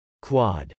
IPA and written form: kwˈɑd (quad)